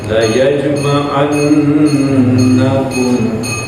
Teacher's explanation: nun bertasdid disebut nun musadadah dibaca gunah